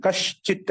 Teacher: దంత సకారం దానికి తాళవి సకారం అయిపోయింది